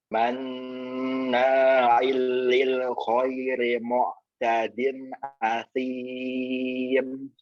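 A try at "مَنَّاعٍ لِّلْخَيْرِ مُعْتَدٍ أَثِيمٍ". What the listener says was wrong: Hati-hati hamzah jangan nempur ain itu. Jadi kayak nempur asim itu kayak ada ain. Murni hamzahnya. Manna'il lil khairi mu'tadin asim.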